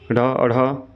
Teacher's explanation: उक्षिप्त ये ढ अढ़ा है, जीभ झटके से गिरती है